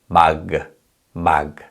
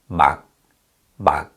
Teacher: the sound stops at the point of release and we never actually hear the kio sound · So this means that the sound of 받침 stops at the point of release, and the sound is not audible. So in this syllable, 막, the sound stops at the point of release, and we never actually hear the 기역 sound. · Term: unreleased sound